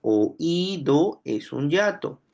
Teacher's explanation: por qué oido es un yato porque hay una tilde allí hay una vocal cerrada tónica o sea está la i con tilde